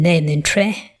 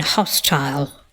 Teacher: we have a weak suffix vowel in momentary, but a strong one in hostile.